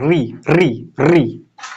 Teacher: तो अ को रख दिया यहाँ पे, फिर ई वाला को रख दिया, और फिर री ध्यान रखना है, री री। अच्छा री का उच्चारण करके देखो कहां लग रहा, मसूरा के थोड़ा सा ऊपर, री री री है ना, री मसूरा से ऊपर। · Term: मूर्धन्य